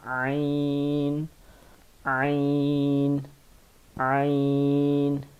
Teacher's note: یہ جو عین ہے یہ بھی حروف حلقی میں سے ہے. عین حلق کے درمیان میں سے ادا ہوتا ہے، وسط حلق میں سے ادا ہوتا ہے، درمیان میں سے ادا ہوتا ہے، اور اس کو پڑھتے ہیں عین، عین، عین.